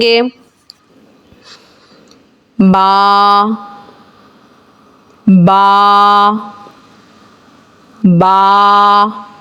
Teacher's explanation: दोनों होंठों के तर हिस्से से बा अदा होता है · हम जिस तरीके से बंद होंठ होते हैं, बंद होंठ से ही इस आवाज़ को बोलना शुरू होंगे तो बाकी अदायगी दोनों होंठों के तर हिस्से से होगी।